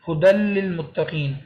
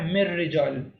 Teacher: نون کی آواز اگنور کرنی ہے، یعنی جب بھی را اور لام آئیں گے ہم نے نون کی آواز نکالنی ہی نہیں ہے، بلکہ نون کی بجائے ہم نے لام اور را کی آواز نکالنی ہے